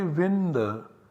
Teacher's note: the parasavarna of this anuswara is na, so we always get vinda